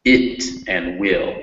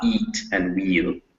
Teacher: it's a little shorter. It's also more relaxed in your mouth. You go from E, you can kind of feel everything's a little tense. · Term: short I